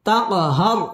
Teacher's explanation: তাক কলকলা ধাক্কা দিয়ে পড়তে হবে।